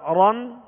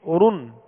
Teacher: جیسا کہ ہم نے پہلے اس کی مشق کی تھی، اور جو ہے را پر دو زبر اور پیش ہوں تو را یعنی موٹا اور پر پڑھا جائے گا